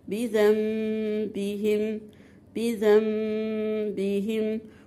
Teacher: حكمه إقلاب. عندك نون ساكنة وراها حرف الباء، قلبت النون إلى ميم